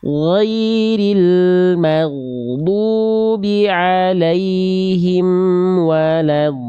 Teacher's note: Tadi Bunda melafalkan sedikit memantul. Ghain sukun suaranya bukan dipantulkan, tapi ghain sukun suaranya dialirkan. Ghairil maghdu, huruf ghain dilafalkan dari ujung tenggorokan kita, dialirkan suara dari sana.